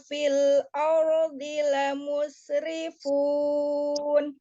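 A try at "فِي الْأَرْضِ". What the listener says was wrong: Fil ardi. A-nya tidak tebal ya, yang tebal qoro'anya ardi, tapi A-nya tidak ardi.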